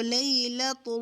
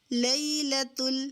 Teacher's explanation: اگر میں اس کو پر کرتی ہوں موٹا کرتی ہوں لام کو تو لیلۃ تو یہ غلط ہو جائے گی لیلۃ یہ صحیح ہے